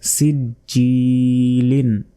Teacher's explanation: জিহ্বার মধ্যভাগ তার বরাবর ওপরে তালুর সঙ্গে লাগিয়ে জিম অক্ষর উচ্চারিত হয়। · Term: জিমের মাখরাজটা